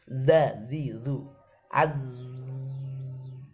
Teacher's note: Unzur, makhrajnya sama, yang saya tekan sama. Jadi depan ujung lidah saya tekan di belakang gigi seri atas.